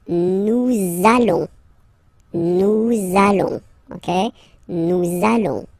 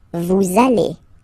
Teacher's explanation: you want to make this beautiful and little liaison, so this little link between the words, so it does mean that you will have to pronounce this z sound, okay, listen to me, nous allons, okay, nous allons, that's it.